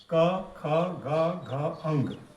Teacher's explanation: तो ये क, ख, ग, घ, अंग का उच्चारण ये कंठ से होता है।